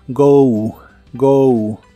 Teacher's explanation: la pronunciación termina con una ligera u